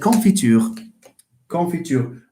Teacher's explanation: To this one here, the u is the high front rounded vowel.